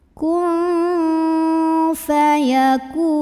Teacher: Kemudian ada ikhfa ausat karena ada nun sukun yang bertemu dengan huruf fa, maka nun sukunnya dibunyikan samar-samar menuju huruf fa sambil ada dengungannya